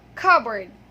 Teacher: So P is silent and it has 2 schwa sounds, 2 schwa vowel sounds.